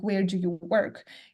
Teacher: Like if you have a yes/no question, then it will go up, yeah, rising intonation. If that's an information question, like where do you work, it will go down.